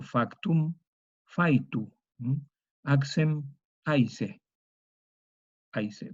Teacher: esa consonante velar, la K, se vocalice en yod